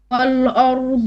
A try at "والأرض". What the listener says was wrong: Stop. Wal flat. Ra heavy. Wal ardi. No. You're making o. You're making o. No. Ra. Wal ardi.